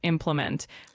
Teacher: the word is pronounced as implement with the emphasis on the first syllable.